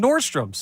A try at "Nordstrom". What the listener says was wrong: Nordstrom. Don't pluralize. It's Nordstrom. It's Nordstrom. Not Nordstrom's.